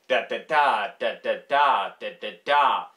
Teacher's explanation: anapestic tetrameter, meaning short, short, long